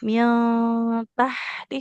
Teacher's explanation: huruf H-nya di tengah tenggorokan